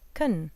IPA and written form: k.n (can)